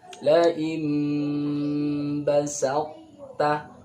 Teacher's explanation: Jadi sifat idbaq dari ta itu masih ada.